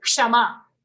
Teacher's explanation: Ksha is made up of two sounds, half ka and full sha.